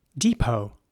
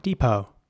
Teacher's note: in American English, the E at the beginning would be pronounced like a E, so it's depot, with a very long E sound